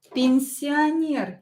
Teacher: О, not stressed. Pronounce it as А.